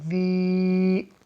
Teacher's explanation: یہاں ہم نے ذال کو اس لیے کھینچا کیونکہ یا ساکن سے پہلے ذال کے نیچے زیر ہے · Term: یا مدہ